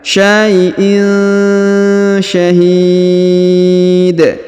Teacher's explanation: huruf tanwin in bertemu dengan sya maka didengungkan dan disamarkan